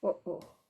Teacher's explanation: Glottal stop, similar to the sound between the O's in English